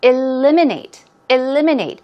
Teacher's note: stress goes right there on the second syllable